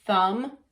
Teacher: just airflow, no, our voice box isn't on. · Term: unvoiced